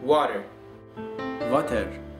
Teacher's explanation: w w is pronounced V